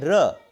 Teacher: आप देख रहे हैं कि र में अ जुड़ा हुआ है, क्योंकि किसी भी व्यंजन का उच्चारण बिना स्वर के हम कर नहीं सकते हैं। आप बोलिए र, देखो अ आ रहा है अंत में, यानी र में अ जुड़ा हुआ है ना।